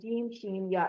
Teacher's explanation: ये तीनों हरूफ जुबान के दरमियान वो दरमियान वाले तालु को लगा कर अदा करते हैं, यानी दरमियान जो मुंह के अंदर जो तालु सख्त तालु है हमारा उसको लगाते हैं।